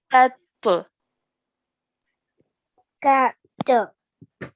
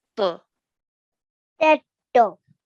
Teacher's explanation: So remember, ta is a thick and heavy sound.